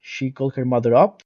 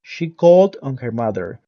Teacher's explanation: In a phrasal verb, the adverb particle is stressed, while the preposition is never stressed in a prepositional verb.